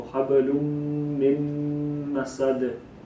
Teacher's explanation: So habalum, and then another meme came after that. So you would merge the meme into another meme. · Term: idgham